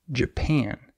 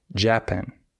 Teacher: in this word the second syllable is stressed